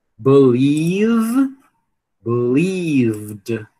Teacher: Eu acredito que a maioria de vocês pronunciava alguma coisa como believed até o momento, mas não é. Terminou no som vozeado, vai atrair o som vozeado aqui, do ED, que no caso vai ser o D